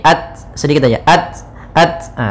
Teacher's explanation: ta memiliki sifat hams tapi jangan banyak-banyak